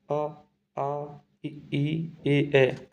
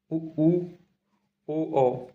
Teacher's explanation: होठ हमारे बोलते पे, स्वरों को बोलते हैं तो गोल हो जाते हैं, उच्चारण से होठ गोलाकार हो जाते हैं। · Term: व्रतमुखी